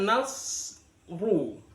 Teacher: Jadi ro kalau berharokat dhammah itu hukumnya adalah ro dibaca tafkhim, tebal.